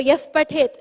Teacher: It's the visarga. When a visarga comes before a pa or a pa, it is the F sound that we produce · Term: upadmaniya